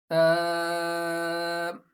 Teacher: زبان کا سرا اور اوپر کے دانتوں کے اندرونی کنارے سے ادا ہوتا ہے۔ اب زبان کے سرے کو اوپر کے دانتوں کے اندرونی کنارے پر لگائیے۔ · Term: ثا